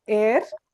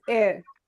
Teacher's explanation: Now depending on what kind of English we are using, in American they stress a little bit more on the word R